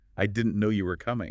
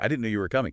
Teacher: try it with a little lift, a little emphasis on no and coming